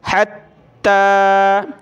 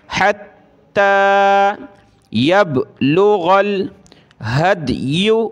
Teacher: ता को खींचना है ऊपर, खड़ा ज़बर की वजह से, सख्त करना है तशदीद की वजह से